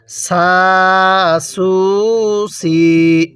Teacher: সা এরপরে সিন ওয়াও পেশ সু এরপর সিন ইয়া জের সি দেখুন আমি সিনটা কিন্তু চিকন করে উচ্চারণ করছি